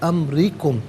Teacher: علیحدہ ملا کر پڑھیں گے امریکم، را کے نیچے زیر ہے، را کو باریک کر کے پڑھا جائے گا